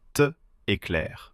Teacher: Dieses T ist nur ein Notkonsonanten, um den nächsten Vokal einzufangen. Man sagt "cet-t-éclair".